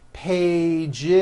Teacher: 1 page becomes 2 pages with that voiced Z. 2 pages. It's not 2 pages, unvoiced, no.